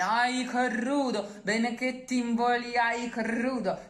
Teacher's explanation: In this case, the strength is in the KR cluster. So you'd rather stress it with a schwa in between.